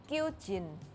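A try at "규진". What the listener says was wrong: Yeah, I think Indonesian pronunciation was pretty accurate, except the kiok part, the K part, was a bit strong.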